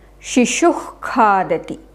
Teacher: It comes from the root of the tongue, so that is why it's called Jihvamuliyam.